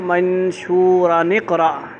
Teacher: نون لے آئیں گے، نون وصلی